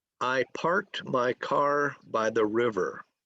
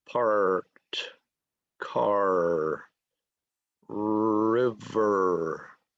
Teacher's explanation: And my R is called a rhotic R.